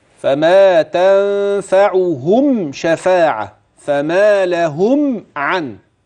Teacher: الميم الساكنة دي مفيش فيها غنة كده